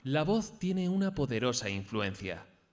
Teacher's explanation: vamos a intentar comenzar la frase en un tono agudo y acabar en grave